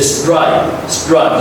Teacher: Whenever you see STR, it sounds like D sound. This T sounds like a D.